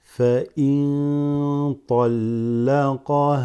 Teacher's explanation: You have noon sakina followed by a ta that makes this ikhfa